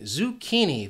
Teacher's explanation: This word has 3 syllables and the stress is on that second syllable, that key.